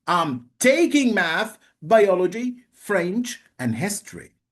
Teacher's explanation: Non-final intonation is used in words and phrases that are listed in a series. The voice rises at the end of each item and falls with the final item. · So when I finish my list, I use falling intonation. But as long as I'm adding to my list, I should use rising intonation.